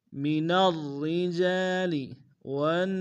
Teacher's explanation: من الرجال والنساء، ون میں واو کو نون ساکن کے سامنے آنا، نون کے اوپر تشدید زور دیں گے، سین کی سیٹی باریک، سین کے ساتھ الف مدہ ہے، الف مدہ کے اوپر مدہ متصل ہے، کم سے کم 3 الف کی مقدار میں کھینچیں گے